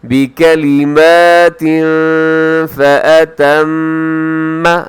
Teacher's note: یہاں میم کے اوپر شد ہے، یہاں غنہ کیجیے گا